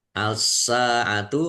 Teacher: Alif lam syamsiyah karena tidak dibaca langsung masuk ke huruf berikutnya yaitu sin. Ditandai sinnya ada tasdidnya.